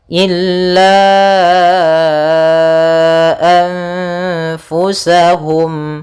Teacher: nunnya disamarkan kepada huruf Fa seperti itu sambil ditahan gunahnya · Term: ikhfa